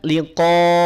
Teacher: sempurnakan bunyi hamzahnya bunyi vokal a bukan bunyi vokal O